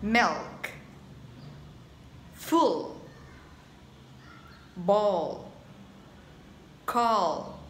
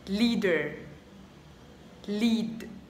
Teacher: الدارك يعني بنقولها ال ال، بنفخمها شوية، لكن اللايت بتكون خفيفة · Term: dark ال